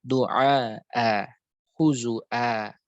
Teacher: dalam keadaan wakaf dia dibaca dengan dua harakat, dibaca dengan qasr saja, dibaca dengan qasr, tidak dengan tawasud ataupun isba'.